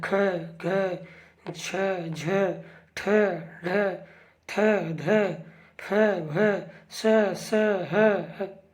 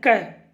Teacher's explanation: इसमें ज़्यादा ऊर्जा, ज़्यादा श्वास वायु घर्षण होता है। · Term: महाप्राण